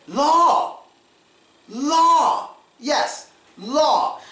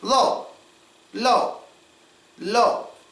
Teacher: Now when you're saying the word low, you don't have to open your mouth that much.